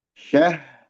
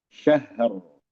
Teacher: Setelah ha mengalir baru ro tebal.